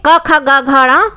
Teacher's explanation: तो क, ख, ग, घ, जो इनका उच्चारण स्थान है, हमेशा कंठ से, गले से ही इनकी आवाज़ निकलेगी, गले से ही ये बोले जाएंगे